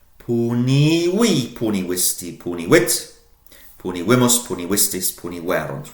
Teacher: Remembering the V is pronounced as a W in Latin.